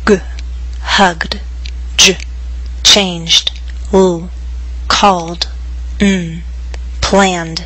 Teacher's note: Pronounce the ed ending as d after voiced consonants and vowels.